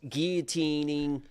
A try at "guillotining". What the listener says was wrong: Gil. You pronounce the L.